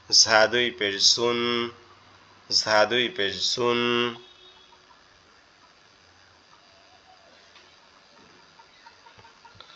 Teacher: জাল জাল জাল দুই পেশুন আর এরপরে ঝা ঝাটা হচ্ছে আমাদের জিহ্বার আগা নিচের দুই দাঁতের আগার সঙ্গে লাগবে লেগে উচ্চারিত হবে ঝা দুই পেশুন ঝা দুই পেশ জুন য